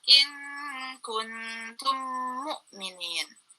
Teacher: Ketika hukum mim sukun bertemu dengan huruf mim, maka dibaca dengung. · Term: idgham mimi